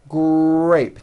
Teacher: notice in the word grape, the R sound is stronger and you even hear it more than the G sound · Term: R blends